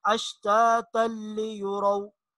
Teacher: تنوین کے بعد لام آ رہا ہے یرملون میں سے اور ادغام بلا غنہ